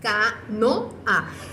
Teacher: queda la O y la A, una al ladito de la otra, pero cada una queda en sílabas diferentes. Entonces por eso se le llama hiato y no diptongo, porque la O y la A no quedaron en la misma sílaba, sino que quedaron en sílabas diferentes, pero una al ladito de la otra.